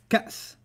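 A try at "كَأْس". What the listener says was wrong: Except with the hamza. Cats. Like cats. A hiccup.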